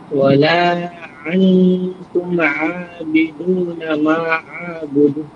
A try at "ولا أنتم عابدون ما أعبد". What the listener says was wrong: মা আ'বুদ, মাতে 3 আলিফ টান আছে, মা আ'বুদ।